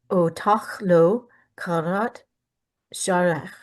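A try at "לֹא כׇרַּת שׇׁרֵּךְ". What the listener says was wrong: In both cases, we have a kamatz katan, lo chorat shorech.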